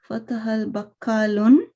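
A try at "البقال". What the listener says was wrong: Bakalun, no, that's alif.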